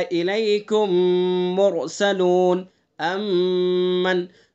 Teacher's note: میم ساکن کے بعد اگر میم آئے گا تو ادغام شفوی ہوگا، ادغام مثلین ہوگا، ادغام میم ساکن ہوگا۔ اس کے اندر غنہ ہوتا ہے